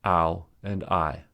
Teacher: Outside is a 2-syllable word as it contains just 2 diphthongs